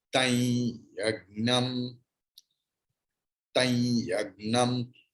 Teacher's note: according to Krishna Yajurveda, after Anushwara, if there is ya, then Anuswara's pronunciation will be like yang